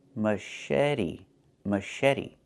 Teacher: The CH makes a soft sh sound, like in fish, mush. And then eddy.